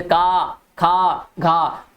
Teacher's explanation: जिनका उच्चारण जीभ के मूल भाग से होता है उन्हें जीवामूली कहते हैं